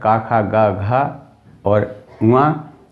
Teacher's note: आ, बड़ा आ, का पूरा वर्ग, का खा गा घा और उआ, और ये हा और विसर्ग, ये पूरी कंठ ध्वनियाँ रहेंगी